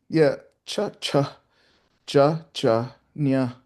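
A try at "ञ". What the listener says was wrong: Yeah, that's more of a m, than a nya. There's no ya sound. M, m. Not a nya here because there's no ya. It's just m, m.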